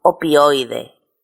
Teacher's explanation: Eso sería un triptongo. Tres vocales unidas y que se pronuncian en una sola sílaba.